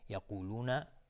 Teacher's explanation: یقولون قاف از حروف استعلاء غلیظ تلفظ میشه